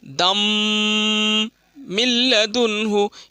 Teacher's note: تنوین کے بعد میم آیا ہے تو اس میں گنہ کے ساتھ ملا کے پڑھیں گے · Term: ادغام